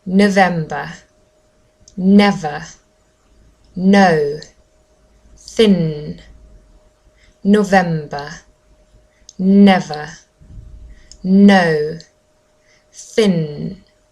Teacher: actually my tongue touches just um behind my teeth